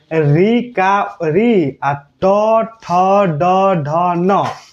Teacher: ऋ ट ठ ड ढ न का उच्चारण स्थान कोई पूछे तो मूर्धा